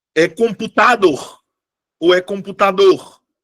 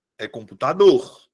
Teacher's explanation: A minha sílaba tônica é a última.